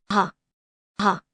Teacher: Similar to h and hat. It's a soft, breathy sound and can slightly change the pronunciation of the following vowel.